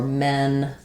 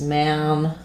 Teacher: the E Less open vowel for then and the a more open vowel